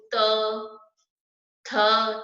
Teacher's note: तो सबके पीछे अ की आवाज आ रही है ना